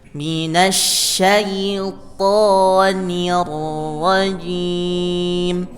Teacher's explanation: Minasyaiton, to to, ya, bunyinya to, tebalkan, ya, hurufnya bunyi tebalkan dengan di o kan, ya, bunyinya o.